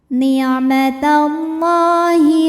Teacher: nmatallah dihukumi dengan mad thobi'i muqaddar. Karena lam ini barisnya fathah panjang, maka lam kita panjangkan dua harakat. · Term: mad tabi'i muqaddar